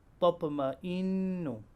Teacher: As we can see on the slide, there is an example of noon mushaddad. It will be read with prolonged nasal sound of 2 counts.